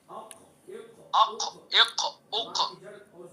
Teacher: قاف کا مخرج زبان کی جڑ اور اس کے مقابل اوپر کا تالو